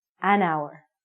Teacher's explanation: because this word our sounds like a vowel because the h is silent we have to say an hour okay you got it you're